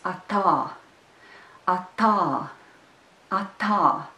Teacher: And here the second syllable is stressed. The second letter a is also long. The first a is short. And the word is atā, atā, atā.